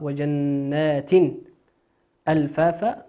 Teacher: النون في جنات نون مشددة مقدارها حركتين، ونقرأها وجنات ألفافا، تنوين بعده همزة، والهمزة من حروف الإظهار، نظهرها كما هي، جنات ألفافا.